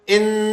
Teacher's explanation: بینہم تو یہ ایسے ہی رہے گا ان ان اب یہ کیونکہ حرف تشدید والا ہے تو اس لیے یہ دونوں نون ساکن بن جائیں گے. ان تھوڑا سا غننے کی آواز کو بڑھائیں گے تاکہ نون کی 2 دفعہ آواز بنے